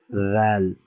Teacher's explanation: জিহ্বার আগা সামনের উপরের বড় দুই দাঁতের, হ্যাঁ, উপরের যে দাঁতগুলো আছে এগুলোর সাথে মিশে নরম সুরে উচ্চারণ